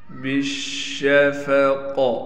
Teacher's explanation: شین پر تشدید ہونے کی وجہ سے ٹھہراؤ بھی کیا جائے گا اور شین کی آواز کو صاف کر کے نکالیں گے۔ قاف کو موٹا بھی پڑھیں گے اور قاف پر قلقلہ بھی کیا جائے گا۔